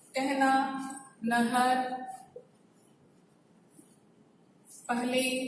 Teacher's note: ह के पहले आने वाले अ का ए जैसा उच्चारण होता है, लेकिन लिखते समय वो ए नहीं होता है।